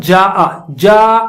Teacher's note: اس میں الف مد ہے اور اس کے بعد حمزہ آ رہا ہے، تو اس کا مطلب اس میں کھینچیں گے آپ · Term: متصل